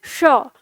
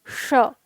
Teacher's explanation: आप श बोलेंगे, जीभ आपकी मुड़ेगी तो इसका उच्चारण होगा श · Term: मूर्धा श